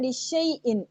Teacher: ये अलिफ नहीं हम पढ़ रहे, हम शीन को या से मिला रहे हैं